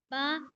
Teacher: दोनों होठों को मिलाना है जोर से